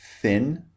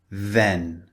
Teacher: the first one is unvoiced put your hand over your throat and the second one is voiced